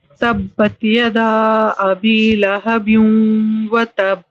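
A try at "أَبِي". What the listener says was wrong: اب ابھی آپ نے کم کھینچا, ابھی ابھی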